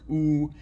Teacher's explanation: produce a vowel like ooh this diagram shows ooh as being produced not only with styloglossus muscle but of course with the lip rounding which you get from the orbicularis oris